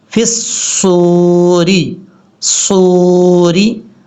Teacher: صاد فل موت پڑھا جائے گا کیونکہ حروف مستعلیہ میں سے ہے. فِي الصُّورِ، صوری، را کو بریک پڑھیں گے کیونکہ را کے نیچے زیر ہے، زیر کی وجہ سے را کو بریک پڑھیں گے، ری، اس طریقے سے.